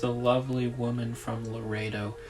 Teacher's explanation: I love those L sounds hanging off of each word and drawing into the next one.